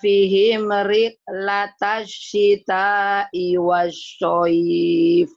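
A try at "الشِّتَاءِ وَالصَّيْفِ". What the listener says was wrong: Soalnya jangan anginnya jangan banyak. Wasaif biasa aja. Wasaif anginnya pelan.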